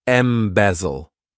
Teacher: this verb has 3 syllables, and the stress is on that second syllable.